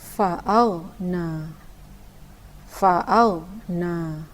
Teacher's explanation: ada yang membaca ghain itu memantul, padahal ia bukan huruf qalqalah